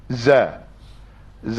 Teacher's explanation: Za tu maksudnya pangkal lidah tidak terangkat dan lidah pun tidak naik menutup langit.